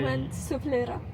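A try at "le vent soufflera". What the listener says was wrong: yeah, you read like Spanish. In France, you don't say most of the letters. You don't say the S, you don't say the U, you don't say the T.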